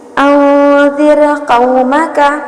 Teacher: یعنی را ساکن سے پہلے کسرہ ہو تو را کو باریک پڑھتے ہیں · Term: را کی ترقیق